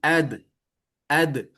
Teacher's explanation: Ujung lidah menyentuh tempat tumbuhnya gigi seri bagian atas. Jadi, ad tidak ada udara yang mengalir, maka nama sifatnya adalah jahar.